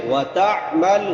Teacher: تا عین کہاں سے ادا ہوتی ہے؟ وسط حلق سے، حلق کے درمیان سے۔ وتعمل، حمزہ نہیں پڑھنا، تعمل نہیں پڑھنا، عین۔